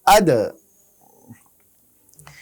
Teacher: খেয়াল করি আমরা এই দাল উচ্চারণ করার সময় বাউন্স হবে, অর্থাৎ এর উচ্চারণ হবে আদ।